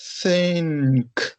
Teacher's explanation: Então, o primeiro que eu estou falando para vocês é o unvoiced. Não vai ter vibração nenhuma na garganta, ou seja, não vai ter produção de voz, tá? Vai ter só produção de ar, só do famoso ventinho, tá?